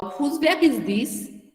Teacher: we want some information, at that time our voice is generally in a falling tone